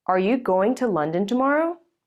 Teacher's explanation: The content words going, London, and tomorrow are stressed. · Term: regular sentence stress